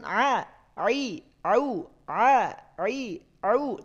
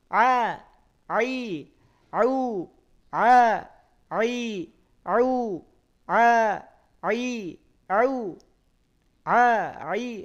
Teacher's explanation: Ain juga mengucapkan a a au a i Au tidak masuk ke hidung tidak a kalau masih masuk ke hidung Berarti ada yang perlu